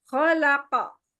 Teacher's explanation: pangkal lidahnya tuh langsung dilepas gitu